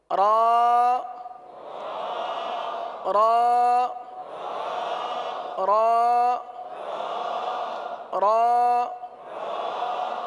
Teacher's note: اب را کے لیے زبان جو ہے یہ دانتوں کی تالو کی جانب والے حصے کی طرف مڑتی ہے اور سیدھی ہوتی ہے، اس طرف جاتی ہے اور سیدھی ہوتی ہے.